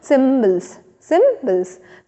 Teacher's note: and phonetic सिंबल्स, यहाँ पे भी देखेंगे कि 2 सिलेबल हैं, एक और ये 2, तो पहला सिलेबल जो होगा ज़्यादा स्ट्रेस होकर के बोलेंगे हम लोग